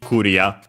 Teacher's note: the one used more often than not is simply Korea with a short a at the end